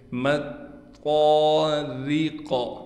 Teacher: ان دونوں موٹے حروف کے درمیان یہ را باریک ہے، اس کا ضرور خیال کرنا ہے۔